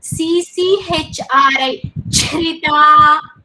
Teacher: One cha is alpaprana, whereas other cha is mahaprana. Both are together.